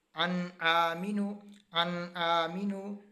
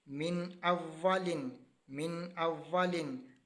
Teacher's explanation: اب نون ساکن کے بعد حمزہ آ گیا، اس کی وجہ سے ہم نے اس کو غنہ نہیں کیا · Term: اظہار